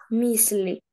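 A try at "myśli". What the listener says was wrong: Мишлі. там буде ще. Ото ще, коли над «си» така креска вгорі, ото вже ми не читаємо як «си», то буде ще. Мишлі. Ще. Мишлі.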